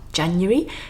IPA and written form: ˈdʒænjəri (January)